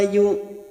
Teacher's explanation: yu tun mad yang bertemu dengan huruf hidup dan dibaca waqaf mat arid li sukun 4 harokat kita panjangkan